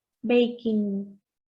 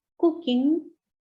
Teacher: está n debe formar la con la parte de atrás de la lengua contra la parte de atrás del paladar por lo tanto se queda el sonido es un poquito más